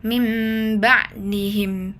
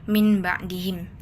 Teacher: nun sukun berubah menjadi bunyi mim dan didegungkan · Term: iqlab, iklab